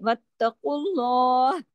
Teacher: अगर हम यहां रुके हैं हमने आरजी सुकून किया है तो हा की आवाज हमारे गले में आनी चाहिए वक्ुल्लाह लेकिन आरजी सुकून का तरीका यह होता है कि आखिरी हर्फ की आखरी जो हरकत होती है उसको रोक देते हैं पॉज कर देते हैं तो यहां हरकत कौन सी है? · और उसके बाद उस पर पेश है और फिर उसके बाद अल्लाह का नाम है तो यहां पर एक तो कफ मोटा पढ़ा जाएगा और आगे लाम जलाला होगा